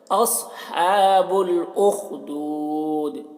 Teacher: صاد کو پور پڑھتے ہیں اور خا کو حلق سے ادا کر رہے ہیں